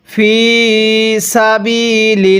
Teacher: এখানে লিল পড়ব না, কারণ আল্লাহ শব্দের এই লামের পূর্বে যদি এরকম জের থাকে তাহলে আল্লাহ শব্দটাকে চিকন করে পড়তে হবে